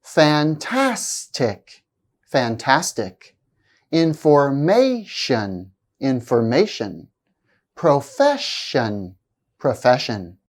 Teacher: provide you with more details words ending in it shun and have stress on the second syllable from the end